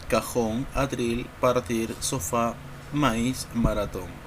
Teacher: fuerza o golpe de voz recae sobre la última sílaba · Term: aguda